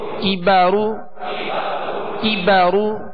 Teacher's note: کاف کو باریک پڑھنا ہے، یہ ڈنڈی والا کاف ہے، اور را کو پر پڑھنا ہے، را پر پیش ہے.